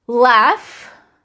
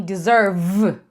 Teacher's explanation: F, só arzinho, sem voz, V com arzinho, vibra, tá vendo? Vibra aqui, mas veja como a característica é a mesma, né?